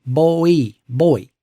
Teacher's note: A diphthong is a vowel that moves between two positions, like the vowel sound in the word boy, where the mouth moves from O to E